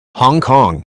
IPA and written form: ˌhɒŋˈkɒŋ (Hong Kong)